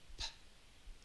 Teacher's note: there's a puff of air that comes out. You can put the heel of your hand on your chin and you can feel that puff of air coming out. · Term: puffs